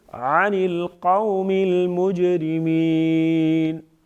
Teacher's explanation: قلقلہ کریں گے یعنی آواز میں جنبش پیدا ہوگی جیم کی ادائیگی کے وقت۔ اب یہ ساکن ہے لیکن اس کو متحرک نہیں بنائیں گے، صرف آواز میں جنبش پیدا ہوگی، ایک وضاحت پیدا ہوگی تو وہ یہاں پر کریں گے، قلقلہ جسے کہتے ہیں۔